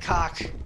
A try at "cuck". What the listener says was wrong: Yeah, you're saying I like cock, not cuck.